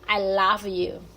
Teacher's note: La O es como una A entre una A y una O y decimos love